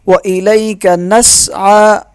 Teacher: عین کو ایک الف کے برابر کھینچیں گے